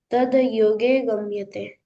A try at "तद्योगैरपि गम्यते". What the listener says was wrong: योगे नहीं, योगई। तद योगैरपि गम्यते।